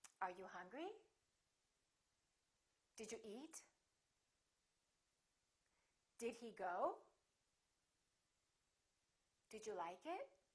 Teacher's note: let's practice some questions which are yes no questions remember intonation goes up